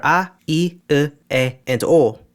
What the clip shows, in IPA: a, i, ɯ, e, and o